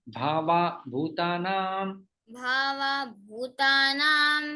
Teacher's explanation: भूतानां विसर्ग का लोप हो जाता है